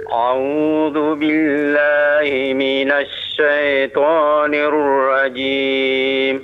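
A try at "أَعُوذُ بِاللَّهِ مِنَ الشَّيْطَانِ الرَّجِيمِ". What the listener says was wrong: Ulangi lagi, hamzahnya tipiskan ya. A'u, jelaskan. A'u.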